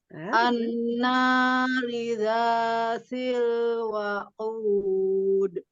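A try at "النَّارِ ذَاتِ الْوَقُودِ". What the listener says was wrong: kalau ro dengan harokat kasroh bacanya apa? Tipis kan? Ya, bacanya tipis, nggak boleh jadi tebal.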